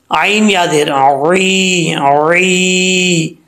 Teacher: आइन को क्लियर करके पढ़ना है, हमजे की आवाज़ ना आए